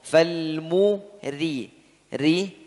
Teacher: Ya, huruf ra di situ tipis. Kenapa? Karena harokatnya kasroh.